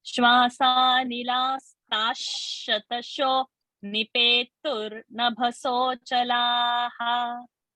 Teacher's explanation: So nilasta, so that visarga will be sh because next word is sh.